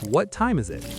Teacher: The is it blends into zit.